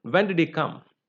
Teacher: wh question like who what when why all these also you know have a falling tone